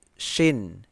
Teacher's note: Shin ini keluarnya di tengah lidah.